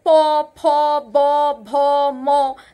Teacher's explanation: দুটো ঠোঁট মানে শ্বাস বায়ু এসে এই দুটো ঠোঁটের মধ্যেই কিন্তু আঘাত করছে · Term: ওষ্ঠধ্বনি